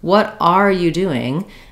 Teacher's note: If I'm saying, what are you doing? I'm stressing on are, then I keep this full R. But in most cases, I link these together and the R becomes more of an sound.